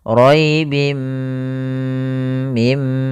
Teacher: memasukkan tanwinnya ke mim dan ditahan gunahnya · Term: idgam bhunah, idgham bi gunnah